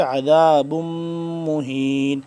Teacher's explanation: عذاب با دو میم پیش بم مہین، یہاں پہ غنہ ہو رہا ہے